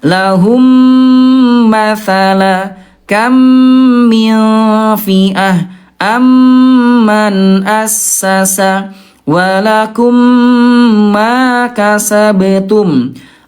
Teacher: ditahan 2 ketukan lambat dan didengungkan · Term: idgham mimi